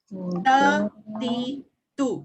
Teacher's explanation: dia ada meletup, dia ada sifat hamas ataupun sifat angin dia ya. Ta, ti, tu. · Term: huruf ta